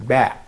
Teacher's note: So that means that we have, for example, for producing ba. Ba sometimes is described as a stop sound or plosive sound because the airstream which are coming out actually from the lungs are stopped in the mouth